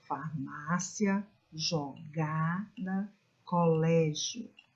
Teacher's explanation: a sílaba tônica né está posicionada na penúltima sílaba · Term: paroxítonas